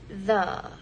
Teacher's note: the tongue is raised a bit its tip placed just behind the Upper Front Teeth